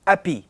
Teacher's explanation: French people again, who tend to forget to pronounce the letter H, instead of the word happy, they might pronounce it happy.